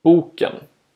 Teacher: Tone 1 is a rising tone. The pitch rises on the stressed syllable, then falls on the unstressed syllable that follows.